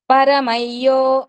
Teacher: య ముందు వచ్చిన అనుసరం కాబట్టి దాన్ని య కింద పలకాలి